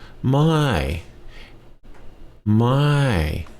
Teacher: my means no that's gotta have a falling tone on that to mean no